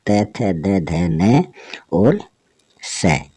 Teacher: त, थ, द, ध, न और स, ये सभी दंत्य वर्ण हैं